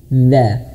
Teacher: Makhrajnya di sini. Dza, ujung lidah menyentuh ujung gigi seri atas dan dikeluarkan lidahnya sedikit. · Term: dzal